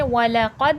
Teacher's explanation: वाव हरफे शफवी है। होठों से अदा होगा। कद दाल हुफ कलकला है जो मैंने बताया है।